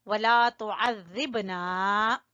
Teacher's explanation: ज़ाल को ज़बान की नोक और ऊपर वाले सामने के दो दांतों के सिरे आपस में मिलेंगे